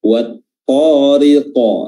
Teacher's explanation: qaf ini adalah huruf tebal, maka qalqalahnya itu lebih tebal daripada huruf-huruf qalqalah yang lain